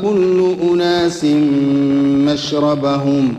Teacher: الغنة هذه ناتجة لما دخلت النون في الميم نتجت عنها هذه الغنة، فكأن النون ذهبت هي وصفتها، فأصبح ذهاب الحرف والصفة معا، لأن هذه الغنة هي غنة الميم لما دخلت فيها النون تشددت فأصبحت فيها غنة. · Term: إدغام بغنة